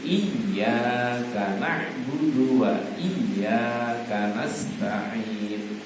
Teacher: Jadi iyanya itu ada tasdid ya. Kalau ada tasdid itu dia dibaca dua harokat. Ditahan dulu, jangan langsung iya, tidak boleh.